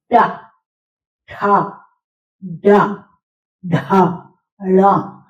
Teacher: देखिए ट वाले सारे अक्षर ये हैं, ट वर्ग के, ये हम मूर्धा से बोलते हैं। टा में हमारी जीभ ऊपर से मूर्धा को टच करती है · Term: मूर्धन्य व्यंजन